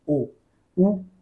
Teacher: ओठ जे आहेत त्यांना राऊंड करावं लागतं आपल्याला उच्चार करून ओ उ आणि उच्चार ओठांशिवाय होऊ शकत नाही म्हणून यांचा उच्चार स्थान कसं आहे ओष्ठ · ओष्ठ्य. म्हणजे आपले ओठ जे आहेत त्यांना राऊंड करावं लागतं आपल्याला उच्चार करताना